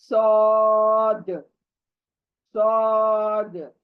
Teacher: हमारे नीचे ऊपर के दांत जो है करीब आएंगे, और पीछे से जबान दांतों की जड़ों को लगेगी